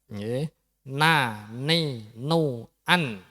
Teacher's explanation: Ketika an, niku sampean mesti lidahe ujung lidah nempel di gusi.